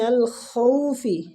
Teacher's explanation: خا مستعلیہ حروف ہے، پور پڑھیں گے